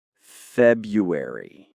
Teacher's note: It's like we drop that first R.